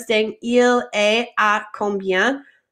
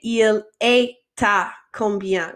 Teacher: when we have a consonant like the T and then the vowel like the A, that we link those two together. So instead of saying il est à combien, we say il est à combien. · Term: linking